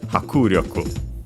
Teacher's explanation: actually accented on the ku, the first ku, so hakuryoku.